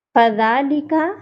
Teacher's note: ذال کو نرم پڑھیں گے اور اس کے اوپر کھڑی زبر ہے، 1 الف کے برابر لمبا کر کے پڑھیں گے